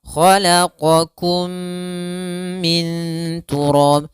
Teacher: Kemudian pada lafal mim mati bertemu mim, maka kita namakan hukum tajwidnya idgham mimi. Cara membacanya mimnya dimasukkan ke mim setelahnya, kemudian ditahan dengan gunnahnya.